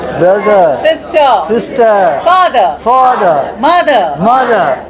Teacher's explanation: Open the jaw. Okay, so R in the final position, you don't say the ra